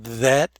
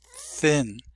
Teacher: there are two th's uh the voiced that and unvoiced thin